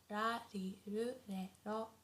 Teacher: the R sound is not as harsh as in English. So it's not like R, not like R, but it's very soft in between L and R.